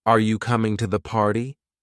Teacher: The Voice will typically rise at the end showing it's a yes or no question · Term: rising, Rising and falling. Intonation